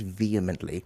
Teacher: Vehemently, not vehemently. The H is silent, so just connect it